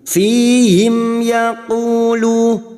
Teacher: Sekarang di sini kita wasal, maka kita uraikan dari kalimat fihim, mim sukun bertemu ya, idhar syafawi. Mim sukun dibaca jelas tanpa mendengung. Fihim yaqulu, cuma diikuti waw sukun 2 harakat, lu sama 2 harakat kita panjangkan mat tabi'i.